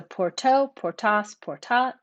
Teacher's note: notice too that that long a is shortened before final t